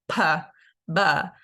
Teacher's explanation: same manner of articulation and place of articulation so manner is you have an abrupt stop of air and then a gust of wind goes between your two lips